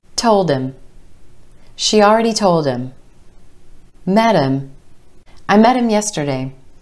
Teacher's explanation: Again, we drop that H and it becomes M.